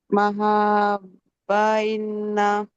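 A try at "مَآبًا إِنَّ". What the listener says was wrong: ఇజహార్ చేయాలంటే కల్పవసరం లేదు కదా. తన్వీన్ శబ్దాన్ని ఎగ్జాక్ట్ గా చదవండి. మహాబన్ నూన్ శబ్దం రావాలి. మా ఆబన్ హంజా ఇది. కాదు, హంజా ఫథా ఆ.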